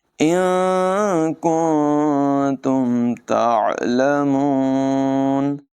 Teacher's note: تا حروف اخفا میں سے ہے، دونوں جگہوں میں نون ساکن کی آواز ناک میں لے جا کر ادا کریں گے، اخفا کریں گے، اس کی آواز کو ظاہر نہیں کریں گے